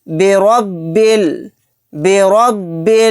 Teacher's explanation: را کو موٹا یعنی پر پڑھیں گے کیونکہ را کے اوپر زبر ہے